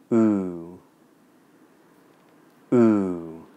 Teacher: Well, the oo vowel sound is made with the tip of your tongue down behind your bottom teeth, and the back of the tongue is high in the back of the mouth. The lips are rounded, the jaw is loose, and the teeth are apart. And the oo vowel sound is long in duration. And of all the vowels, the back of the tongue is in the most high and backed position.